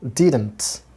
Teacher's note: You have to give a stress on the first syllable. Giving a stress means you have to make louder sound. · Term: primary stress